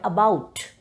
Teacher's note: the two vowels O and U they are pronounced together with the sound like ow